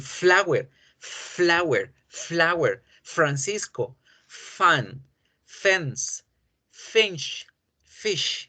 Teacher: muy bien cómo se genera el sonido por crear esa fricción el aire pasa friccionando entre los labios y los dientes y eso es lo que genera el sonido de la efe